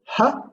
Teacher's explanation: the last place of articulation is glottal